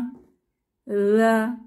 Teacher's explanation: জিহবার আগা দাঁতের আগা নরম আওয়াজ